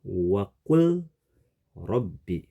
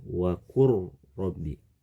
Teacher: lam sukun pada kata waqul yang dibaca dengan cara dimasukkan ke huruf ro, yang dibaca dengan cara dileburkan ke huruf ro, melebur ke huruf ro, yang dibaca dengan cara digabungkan ke huruf ro. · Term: idgham